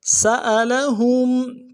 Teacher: حمزہ کو نرم سے ادا کریں گے، لام کو نرم سے ادا کریں گے۔ ہا کو میم ساکن کے ساتھ ملانا ہے، میم ساکن میں یہاں پہ اظہار ہوگا